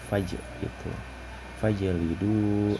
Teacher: Nah, qalqalah ini dibacanya memantul, jadi faj itu.